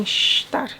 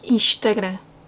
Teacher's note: Reparem aqui no som sh, antes do T, como em estar.